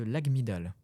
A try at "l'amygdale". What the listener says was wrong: Le G ne se prononce pas, c'est l'amygdale.